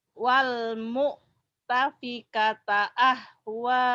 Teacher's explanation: Agak neken ya hamzahnya kalau ada mati.